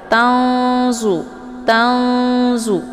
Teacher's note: Tanzu di sini ada nun sukun berhadapan dengan huruf za, yaitu huruf ikhfa. Cara bacanya nunnya disamarkan, siap-siap masuk ke huruf za. Nah, untuk nun sukun bertemu dengan za ini dinamakan dengan ikhfa al-sad ya.